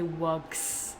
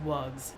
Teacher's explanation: We need the child to say WUGs with a Z because that's how the plural rule works in English.